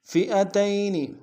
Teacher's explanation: فی المنافقین، فئتین میں حمزہ کو نون سے ادا کریں گے، تا کو یا کے سامنے آئیں گے، یا لین بغیر کھینچے پڑیں گے